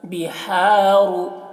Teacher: ہا حلق سے اس کی آواز نکلتی ہے اور ہوا کے ساتھ بھی اس کی آواز نکلتی ہے